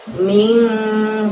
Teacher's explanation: Jadi bukan bunyi N yang jelas, tapi N yang agak samar. Maka kita bacanya ming, seperti itu ya.